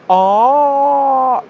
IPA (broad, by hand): a: